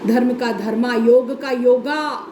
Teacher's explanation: ये अंत में आगम हुआ है स्वर का